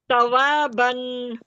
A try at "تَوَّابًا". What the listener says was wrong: توا نہیں، واؤ پر تشدید ہے، ڈبل پڑھنا ہے اس کو. تا واؤ زبر کیا ہوتا ہے؟